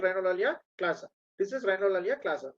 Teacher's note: loss of nasal resonance is called rhinolalia classa